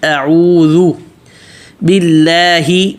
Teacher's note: اعوذ باللہ پتلا، اللہ کا نام جو ہے پیچھے اللہ کے نام سے پہلے جب زیر ہو کسرہ ہو تو اس کو باریک پڑھتے ہیں